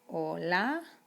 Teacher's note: you don't even pronounce the h in spanish